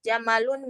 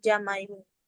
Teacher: ciri khas dialek ini adalah merubah huruf lam menjadi huruf ya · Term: lahjah ar-rubtah